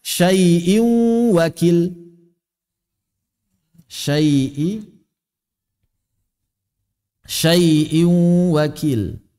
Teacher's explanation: Maka di mulut sudah waw bertasydid. Di hidung ada suara ghunah. Sehingga kalau kita tutup hidung ada suara waw di mulut. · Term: idgham bi gunnah